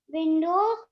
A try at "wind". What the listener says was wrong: It is not window, wind. Cold wind.